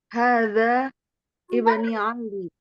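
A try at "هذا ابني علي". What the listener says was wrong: Ibni panjangin dulu. Ni. Ali, ya-nya yang bertasydid. Ali ya. Ya-nya yang bertasydid ya.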